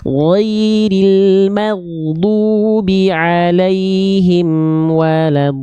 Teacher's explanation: Do-nya kurang panjang, mad lazim Bunda, 6 harokat ya. Lamnya jangan ditahan, ditekan.